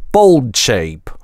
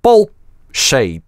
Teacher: bolt это /l/ резко обрывается гортанной смычкой